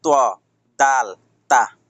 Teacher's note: জিহ্বার আগার সামনের উপরে দুই দাঁতের ঘোড়ার সঙ্গে লাগাইয়া ত দাল তা একই জায়গা থেকে উচ্চারণ আসবে তিনটার নাম যেহেতু